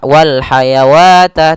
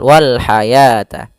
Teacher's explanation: tapi dibaca dengan al-hayata, bukan al-hayawata, sehingga ditandai di sini dengan warna abu-abu, yaitu huruf wawunya dianggap tidak ada. Maka bukan kita baca wal hayawata, tidak, tapi wal hayata.